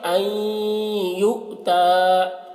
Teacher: اسے پڑھیں گے این یؤتا، تو این، دیکھیں یہاں پر نون کو پڑھا جا رہا ہے، یہاں پر غنہ ہو رہا ہے، غنہ کے ساتھ میں نون یا کے ساتھ مل رہا ہے لیکن مکمل طور پر نہیں مل رہا ہے، بالکل ایک نہیں ہو رہا ہے، بلکہ نون کو بھی پڑھا جا رہا ہے، اس وجہ سے اس کو ادغام ناقص کہتے ہیں۔